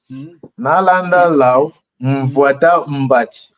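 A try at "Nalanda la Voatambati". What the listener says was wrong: Attention, on n'a pas de nasal. Mvoatambati.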